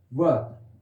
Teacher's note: ये एक ऐसा वर्ण है कि जो केवल दंत और ओष्ठ से बोला जाएगा, जिसको दंतोष्ठ कहा जाता है। दंत और ओष्ठ को मिला देते हैं तो क्या हो जाता है, दंतोष्ठ।